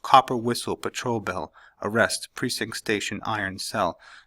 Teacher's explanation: the sounds become a lot quicker, and they're all stressed syllables